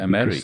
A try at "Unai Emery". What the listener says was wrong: Because, the emphasis is over the middle E. It's not Emery. It's Emery.